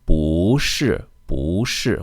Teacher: So if the word that follows bu is a fourth tone, like 是, right? 是 is a fourth tone, then bu changes to a second tone.